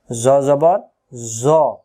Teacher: জ অক্ষর জিহ্বা আগা থেকে মোটা করে পড়তে হয়